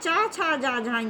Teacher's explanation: इनका उच्चारण स्थान तालव्य होता है